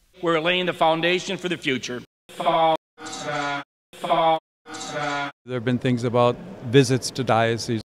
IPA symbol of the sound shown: ɑw